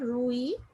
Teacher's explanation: 1 syllable is formed, rui, and the stronger sound is on the I because it comes second.